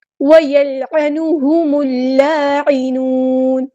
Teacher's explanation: یہاں پہ دیکھیں وَيَلْعَنُ، عین کو مستحلق من تھوڑا سا ادا کرنا ہے، میم کو ہم نے لام کے ساتھ ملا دینا ہے